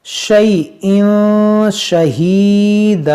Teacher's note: تنوین کے بعد شین ہے تو یہاں پر اخفا کریں گے